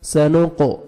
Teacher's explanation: سین پڑھیں گے اور قاف کو موٹا ڈبل ساؤنڈ آئے گا